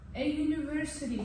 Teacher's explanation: University soʻzi bizda ye shaklida o'qilgani uchun university y shaklida o'qilapti. Demak, Y harfiga o'xshab o'shaning uchun biz a shaklida qo'ydik.